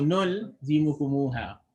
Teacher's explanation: So when you're saying nul, the sound, the tongue stays touching the gums while you're saying the nul part.